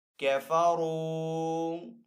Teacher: آگے واو ساکن ہے، واو ساکن سے پہلے را کے اوپر پیش ہے تو یہاں پہ واو مدہ ہے، تو یہاں پہ بھی واو مدہ کو ایک الف دو حرکات کے برابر کھینچ کر ادا کریں گے